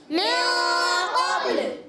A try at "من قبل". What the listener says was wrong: قبل لام کو نہیں ہلانا، آواز آئی من قبل تو لام کو نہیں با کو ہلائیں گے.